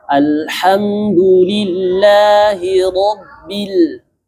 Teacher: Sekali lagi, ro-nya tebalkan. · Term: Ro tebal